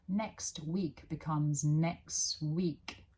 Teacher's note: We drop sounds between linked words. Next week becomes next week. There's no T.